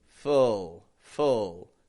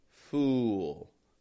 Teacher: full, no lip movement, fool. Has a bit of a lip movement.